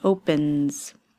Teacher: N is a voiced sound. So it's a z ending at the end.